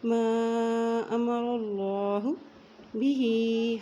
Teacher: ہا کے نیچے کھڑی زیر بھی ہے، اوپر مد بھی ہے، اس لیے اس کو لمبا پڑھیں گے